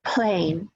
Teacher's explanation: P in initial position has a burst of air after it, as opposed to stop. The P at the end, you don't feel any air.